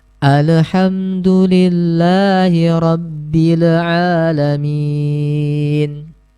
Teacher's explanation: pada huruf lam ini terdengar seperti terpantul